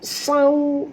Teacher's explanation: Dan waw tu sifatnya lin. Jadi kalau kita baca ni, kita kena muncungkan mulut kita.